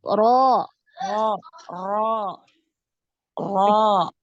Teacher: Ro, naik, pangkal lidahnya naik. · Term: tafhim